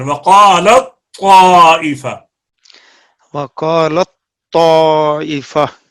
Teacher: وقالت تا بالکل بند ہو جائے اس کے اندر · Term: ادغام